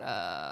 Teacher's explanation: there's a little bit of vocal fry which is like that uh sound down the bottom so it's quite relaxed Um, but also there's like this nasal quality that sits on top and that tends to make the sound brighter, right?